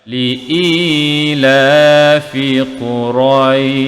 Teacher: Ila, i 2 harakat, la juga 2 harakat kerana ada tanda panjang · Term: mad asli